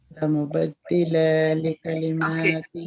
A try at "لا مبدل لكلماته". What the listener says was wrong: ला मुबद्दिला आपने क्यों पढ़ा है? कौन सा मद है ये? कौन सा मद है ये?